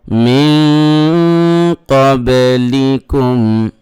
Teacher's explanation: দেখেন নুন সাকিনের পরে কফ আসছে, নুন সাকিনের পরে কফ ইখফা হয়েছে, এই জন্য নুন সাকিনের উচ্চারণটাকে নাকের ভিতরে নিয়ে একালিফ গুণ করে পড়তে হবে